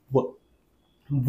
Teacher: वरचा दात आणि हा खालचा ओठ यांचा एकमेकांना स्पर्श झाला की व चा उच्चार होतो व उच्चार करून बघा व व बोलताना हा खालचा ओठ आणि · बोलताना हा खालचा ओठ आणि वरचा दात यांचा स्पर्श एकमेकांना 100% होणार आहे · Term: दंत ओष्ठ्य, दंत ओष्ठ